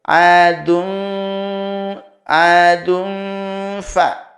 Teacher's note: Tapi adun fa ada samarnya, samar dan dengung. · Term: ikhfa ausat